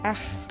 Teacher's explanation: c'est la partie de la langue la plus profonde qui vibre, près de la luette